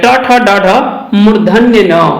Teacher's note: ये ट वर्ग के जितने भी वर्ण हैं इनका उच्चारण हमारे मुख के मूर्धन्य से होता है या मूर्धा से होता है